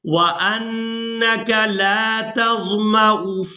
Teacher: یہاں پر جو واو ہے یہ صرف رسم الخط ہے، اس کو ادا نہیں کیا جائے گا. حمزہ کو پیش کے ساتھ ادا کریں گے اور اس کو بغیر کھینچے ادا کریں گے.